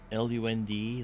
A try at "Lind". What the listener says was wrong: I think it's Lind, L-I-N-D.